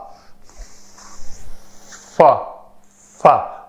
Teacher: اوپر والے دانت نیچے والے ہونٹ کے اوپر آ کر لگتے ہیں تو فا ادا ہوتا ہے